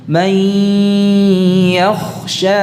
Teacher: Jadi tidak cukup may yakhsha, menahan ya-nya saja tidak cukup, disertai dengan dengung.